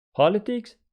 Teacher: This one is politics with the stress on the first syllable.